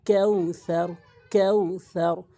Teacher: সতের উচ্চারণ হচ্ছে জিহ্বার আগা এবং উপরে নিচে দুটি দাঁতের আঘাতে লাগাতে হবে